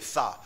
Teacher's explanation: जैसे ही आप उच्चारण करोगे किसका, शा का, शा, जब भी सा बोलोगे सा, तो सा में जीभ तुम्हारी तालू में टच नहीं करेगी, हवा उसके बीच से संघर्ष करते हुए प्रेशर दे रही है, ठीक है, दबाव दे रही है जीभ को, ठीक है। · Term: ऊष्म संघर्षी